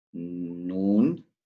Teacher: Then we have noon, which is the tip of your tongue. It touches the gums of the top of your front teeth. Noon. So it's touching.